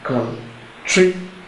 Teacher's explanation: So at the second syllable, you have stress. There's more emphasis.